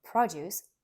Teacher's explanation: as a noun produce stressed on the first syllable